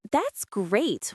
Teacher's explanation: With rising enthusiastic intonation sounds genuinely excited.